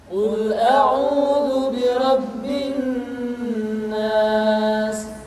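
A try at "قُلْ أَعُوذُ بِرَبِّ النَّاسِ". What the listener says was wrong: Tidak boleh dibaca Qul a'udzu birabbin nas, tetapi ditahan suaranya ketika mengucapkan nun tasydid seperti ini. Qul a'udzu birabbin nas.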